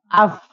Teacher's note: Tapi dengan nanti ketentuannya bibir yang menempel dengan gigi seri atas